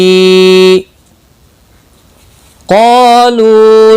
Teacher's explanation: क़ाफ और अलिफ दोनों पुर पढ़े जाएंगे। क़ाफ मुस्तालिया है इसलिए पुर पड़ा जाएगा, और इसके साथ में अलिफ भी है वो भी पुर पड़ा जाएगा।